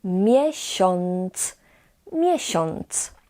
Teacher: the a with a tail, as we call it, we pronounce in this particular word as on